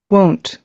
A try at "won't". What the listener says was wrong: won't উ দিয়ে শুরু, won't। Own না, won't।